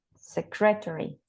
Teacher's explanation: I found 3 syllables, and the stress syllable is the first one, secretary.